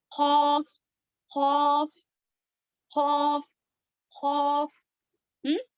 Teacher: خوف کا جو ہے ایک دم ایزی مخرج ہے، یعنی کہ ہماری زبان کی جڑ جو ہے اوپر کی طرف جو سافٹ پارٹ رہتا ہے وہاں پر ٹچ ہوتی ہے، تب جا کر اس کا مخرج ادا ہوتا ہے.